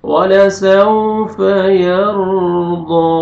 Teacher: جزم سے پہلے زبر ہے، آپ نے را پر کرنا ہے، ضاد کو موٹا کر کے آپ نے کھینچنا ہے